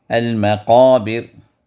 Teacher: قاف کو بھی یہ حروف استعلاء میں سے ہے تو یہ قاف کو بھی پر پڑھنا ہے